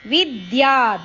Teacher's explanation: ವಿ ಅಕ್ಷರದ ಮೇಲೆ ಆಘಾತ